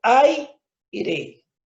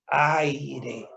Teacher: La A es abierta, la I es cerrada. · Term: diptongo